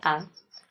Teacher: कहां से निकल रही है हमारे कंठ से अगला है आ आ का उच्चारण करने में भी ध्वनि जो है हमारे कंठ से निकलती है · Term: कंठ वर्ण